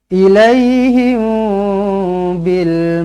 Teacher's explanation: mim kosong bertemu dengan ba Ikhfa Syafawi dengungkan dengan dua harakat